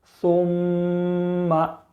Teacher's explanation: جیم زبر جا، ہا نون زبر ہن، جہن، نون زبر نا، جہن، میم زبر ما، جہنم، ثم، میم کے اوپر تشدید ہے، تشدید والی حرف کو 2 مرتبہ پڑھیں گے، ایک بار پچھلی والی حرف سے ملا کر اور ایک بار خود اسے، اور میم کے اوپر تشدید ہونے کی وجہ سے ایک الف کے برابر غنہ کر کے پڑھیں گے